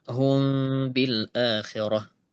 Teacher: mim sama ba itu sama-sama keluar dari dua bibir makhrajnya ya. Makhraj ba di dua bibir. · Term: ikhfa syafawi